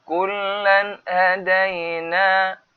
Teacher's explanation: nampak tanwin ni bertemu dengan ha, maka kena jelas. Kullan hadaina berarti dengan dua harakat di sini.